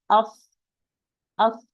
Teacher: Also, you can feel it if you put here. You are going to feel no vibration because the vocal cords are open. As, a lot of air. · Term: voiceless letter